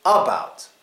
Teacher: the first letter the first syllable gets the schwa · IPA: ə